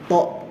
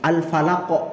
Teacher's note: Untuk huruf qaf dan ta pantulannya mendekati suara o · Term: qalqalah sughra